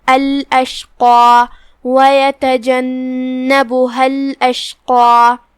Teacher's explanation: قاف کی ادائیگی زبان کی جڑ اور تالو کے نرم حصے سے ہے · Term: حرف القاف